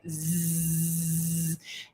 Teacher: I put my fingers here and I say my fingers tickle I feel vibration right there's vibration there so that means that the z sound is voiced